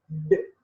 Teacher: The tip of the tongue is touching teeth ridge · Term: alveolar